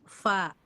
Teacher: bibir bawah dengan ujung gigi seri atas